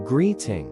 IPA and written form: ˈɡriːtɪŋ (Greeting)